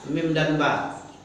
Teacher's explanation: tempat keluar di bibir namanya disebut syafatani dua bibir syafatan seperti ba mim itu kan huruf bibir tuh kan di